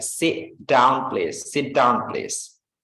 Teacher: sit, like there is no T, like T silent, but we put like short sound.